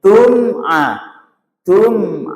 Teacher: Huruf yang alat ucapnya kedua bibir sehingga tidak boleh ditahan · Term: izhar syafawi